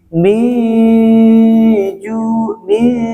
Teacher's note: ketika mi itu lidah kita sudah mau ke huruf jim. Persiapan. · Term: ikhfa hakiki